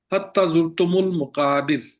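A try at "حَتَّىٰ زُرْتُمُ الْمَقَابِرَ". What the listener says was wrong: हत्ता लंबा करें, हत्ता जुर्तुमुल मकाबिर।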